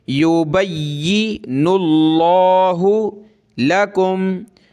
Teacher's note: لفظ اللہ سے پہلے نون پر پیش ہے تو لفظ اللہ کو موٹا کریں گے